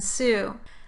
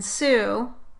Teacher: On the other hand, for the s sound like in Sue, a fricative consonant, you have to place your tongue blade against the alveolar ridge and then make a small groove in the tongue so that air can flow through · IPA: /s/